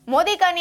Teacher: ગુરુ થશે ત્યાર પછી લી છે એ ગુરુ થશે મોદિકાની અંદર મો દીર્ઘ દી દીર્ઘ અને કા પણ દીર્ઘ થશે